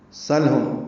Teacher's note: سلهم سین کو لام سے ملانا ہے، سین باریک صفیر کی آواز سے ادا کریں گے، سل سیٹھی کی آواز سے، لام ساکن پہ اظہار، لام پہ قلقلہ نہ ہو اس لیے اظہار ہے، ہم میں میم ساکن پہ اظہار شفوی ہے اس پہ بھی قلقلہ نہ ہو اور غنہ بھی نہ ہو.